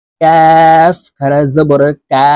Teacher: আর কাফ হরফ জিহ্বার গোড়া থেকে একটু আগে বাড়াইয়া উচ্চারণ করব